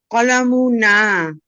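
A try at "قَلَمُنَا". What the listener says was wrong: কলামু, মুতে টান হবে না, কলামু না, নাতে টান হবে। কলামু না।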